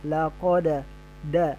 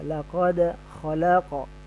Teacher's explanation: pantulannya biasanya fathah, laqad da bukan d ya. Ya, laqad khalaqa ya.